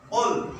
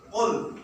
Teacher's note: Qul, huruf qaf. Ya, bacanya qul, hurufnya qaf. Itu di tenggorokan keluar.